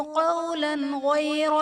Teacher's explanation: لام پر دو زبر کی تنوین، تنوین کے بعد حروف حلقی میں سے غین ہے تو یہاں پر اظہار کا قاعدہ ہوگا، یعنی تنوین میں ہم غنہ نہیں کریں گے